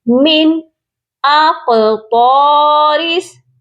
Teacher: قاف موٹا بھی پڑھا جائے گا اور قاف ساکن ہو رہا ہے